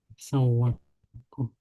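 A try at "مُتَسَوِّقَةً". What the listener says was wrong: Jadi mutasawwiqatan. Jadi kurang kof. Mutasawwiqatan.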